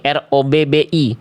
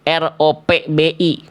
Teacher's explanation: Ba tasydid itu jangan melipir ke huruf P dulu, ya. Jadi kan harusnya kalau kita latinkan itu dibacanya R.